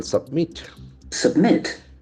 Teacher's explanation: accent falls on the second syllable